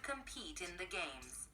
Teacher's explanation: Thì ở đây cái final sound là T, nhưng mà đây nó sẽ nối âm qua cái chữ in này. Vậy chúng ta sẽ đọc là competing the games.